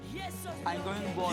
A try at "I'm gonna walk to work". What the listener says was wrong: No, I'm going to, pero se pronuncia I'm gonna. I'm gonna walk to work.